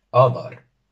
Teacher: Tenemos las dos a profundas, y al ser una palabra de dos sílabas la tónica cae en la primera. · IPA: 'ɑ.dɑr